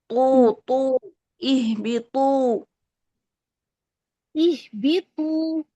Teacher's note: त का मखरज मजबूती से टच करें क्योंकि त में शिद्दत है ठीक है जहर है हमस नहीं है तू ऐसी आवाज नहीं · تو کا مخرج مضبوطی سے ٹچ کریں کیونکہ تو میں شدت ہے